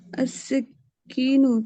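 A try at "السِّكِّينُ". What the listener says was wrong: सीन के ऊपर देखें क्या है? सिक्कीन, ठीक है ना?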